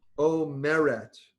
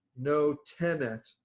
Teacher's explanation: accent on the second to last syllable